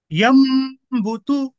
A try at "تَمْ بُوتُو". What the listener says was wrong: یہ تا ہے اوپر نقطے رہے تو تا بولنا ہے اس کو. تم. تم بوتو.